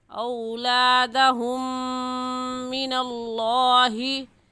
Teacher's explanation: मीम साकिन के बाद मीम आ गया है तो इस वजह से गुन्ना करेंगे।